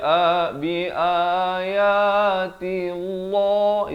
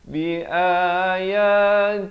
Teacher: Allah itu tebal salah di sini kita baca nipis